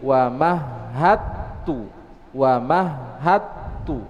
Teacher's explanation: Wa mahadtu, asalnya seperti itu, ada huruf dal, tapi karena dal dan setelahnya ta, maka diidghamkan ke huruf ta menjadi wa mahadtu.